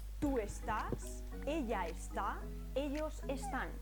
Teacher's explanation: la sílaba tónica no es la penúltima sino la última